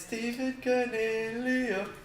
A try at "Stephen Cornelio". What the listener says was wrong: Cornelio. Just got a stutter at the start of Cornelio. Stephen Cornelio.